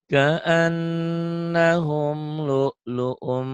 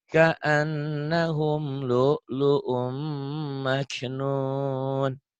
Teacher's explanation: Ditahan lu'lu'um karena itu idgham bigunnah, sama seperti gunnah ya. Dan hurufnya kebetulan mim juga.